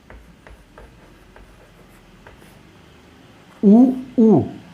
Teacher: इसका उच्चारण हम लोग कहाँ से कर रहे हैं, ओठ के सहारे कर रहे हैं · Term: ओष्ठ वर्ण